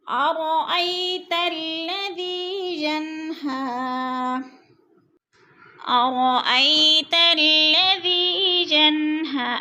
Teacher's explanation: یا ساکن سے پہلے حمزہ کے اوپر زبر ہے، تو یا لین کھینچنا بھی نہیں ہے اور جھٹکا بھی نہیں دینا